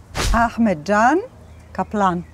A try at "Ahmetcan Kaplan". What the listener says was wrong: 100% correct.